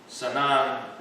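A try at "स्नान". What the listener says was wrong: You don't say sanan, you say snan.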